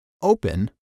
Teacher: in verbs where the last syllable is not stressed for example in the word open the stress is on the first syllable